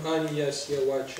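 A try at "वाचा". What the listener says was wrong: Вы напрасно произносите санскритское В, как у английского. Это не соответствует тому, что...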